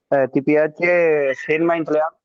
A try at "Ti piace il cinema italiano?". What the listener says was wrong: Ti piace? Okay, जरा सवाल के अंदाज में बोलिएगा। Ti piace il cinema italiano?